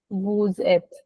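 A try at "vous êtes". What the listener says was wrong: Again, I hear who's et. No, woo, zet. then you pronounce the S when you start to pronounce the et. this is called liaison.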